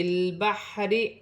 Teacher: را کے نیچے زیر کی حرکت ہے, را باریک پڑھی جائے گی